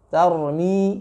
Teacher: jangan sampai menggetarkan huruf ra yang memang dia punya sifat bergetar, tapi getarannya tidak boleh terlalu over, tidak boleh banyak.